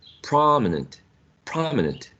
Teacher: the first one is louder the first one i think it's longer as well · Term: stressed syllable